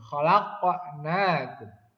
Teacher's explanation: ada qalqalah juga, yaitu huruf qaf yang disukun.